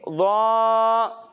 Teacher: اسے موٹا پڑھنے کے ساتھ ساتھ اس میں سیٹی کی آواز نہیں آئے گی۔